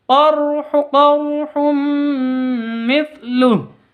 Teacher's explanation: tanwin bertemu dengan mim. Masuk ke mim disertai dengung 2 ketuk. Ini namanya idgham bi gunnah.